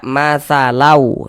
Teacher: Jadi bunyi tanwinnya ini dimasukkan ke huruf waw, cara bacanya diidghamkan. Nah, ya. Nah, dimasukkan ke huruf waw, melebur ke huruf waw. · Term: idgham bi gunnah